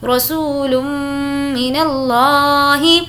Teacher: اب یہاں تو ہم نے واو مدہ ہے اس لیے کھینچ کر پڑھا۔ لم پہ ہم نے غنہ کیا کیونکہ تنوین کے بعد میم آ رہا ہے تو ہم غنہ کریں گے